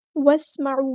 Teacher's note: सीन की सीटी हम वाज़ेह करेंगे। वस्मऊ वाव को हमने सीन के साथ मिला देना है। हमज़तुल वस्ल हमारा ड्रॉप हो जाएगा। आइन को मुस्तहरिक मिडल थ्रोट से अदा करेंगे।